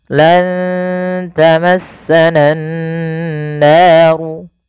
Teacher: dengan menahan suara nun dan memasukkan ke rongga hidung kita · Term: gunnah